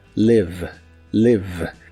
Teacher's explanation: Se pronuncia con la I corta que se parece un poco al sonido E, la V es labiodental y la E del final es muda.